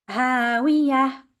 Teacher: We have to change the ta marbuta into a ha.